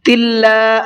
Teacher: اللہ کے لام کو باریک پڑھا ہے، اس لیے کہ اللہ کے لام سے پہلے زیر ہے